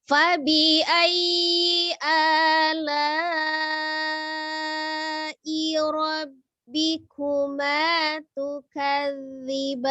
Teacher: Harus 2 ya. Kuma, ma-nya itu 1 kali ngayun aja. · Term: 2 harokat